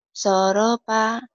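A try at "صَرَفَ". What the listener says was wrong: Kayak orang Sunda ini soropa. Kan F ini sorofa gitu. Di F ya, jangan di P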